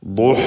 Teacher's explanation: ദ്വാദ് നേരത്തെ സൂചിപ്പിച്ചു, ഇസ്തിഅലാന്റെ അക്ഷരങ്ങളിൽപ്പെട്ടതാണ്. നാവിൻ്റെ സൈഡിൽ നിന്നാണ് അത് ഉച്ചരിക്കുക